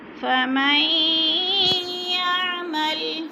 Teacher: फमन भी नून साकिन के बाद या मुशद्दद है तो इदगाम हो रहा है, और सख्ती से पढ़ेंगे और गुना करेंगे